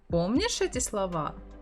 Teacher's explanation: if you raise your intonation, помнишь эти слова? It's already the question.